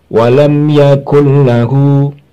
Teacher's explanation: Itu namanya idgham bi ghairi gunnah, tanpa berdengung. Setelah masuk ke lam suara nun sukun tanpa berdengung, langsung mengucapkan hurufnya lam atau ro.